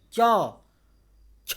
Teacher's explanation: जीभ ऊपर जा रहा है, तालू में सट रहा है, इसलिए तालव्य व्यंजन है